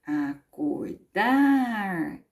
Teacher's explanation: à última sílaba aqui é o dar que é mais forte o chamamos então de oxítona quando a última sílaba foram forte